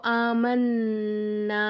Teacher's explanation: சத்து செய்யப்பட்ட நூனை ஒரு செகண்ட் நல்லா அழுத்தி உச்சரிக்கணும்